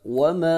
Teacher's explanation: 3 الف کے برابر لمبا کریں گے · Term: مدہ